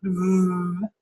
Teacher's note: but sometimes the others might apply so labio gental means that you have your lower lip up against your front teeth as in V when you make a v sound